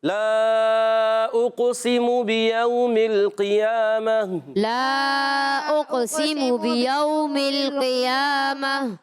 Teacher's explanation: گول تا کو وقف کریں گے، رکیں گے، تو اس گول تا کو ہا سے بدل دیں گے، اس کو کہتے ہیں وقف بالابدال، وقف بالابدال، مع الہا، یاد رکھنا ہے آپ نے۔